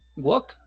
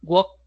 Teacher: Entonces, decíamos que en el último sonido, aquí por ejemplo, el verbo walk suena como una c de casa, que si usted se toca su garganta va a sentir que no hay vibración, por lo tanto, lo vamos a unificar con otro sonido que tampoco vibre.